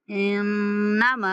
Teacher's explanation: ما کو 3 سیکنڈ تک کھینچ کے پڑھیں گے